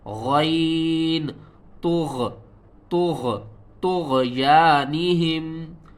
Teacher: طا کو موٹا کر کے پڑھنا ہے، غین کے ساتھ ملانا ہے، غین کو بھی موٹا کر کے پڑھیں گے اور غین کو حلق کے سب سے اوپر والے حصے سے ادا کریں گے۔